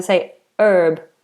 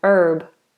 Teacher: in some places in America they say herb, so they won't say the H. Not all, of course, the accents vary vastly over America, but they usually say basil and herb.